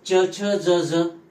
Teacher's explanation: यांचा उच्चार तालव्य आहे च वर्गाचा उच्चार तालव्य आपला च छ ज झ म्हणताना आपल्या जिभेचा स्पर्श कठोर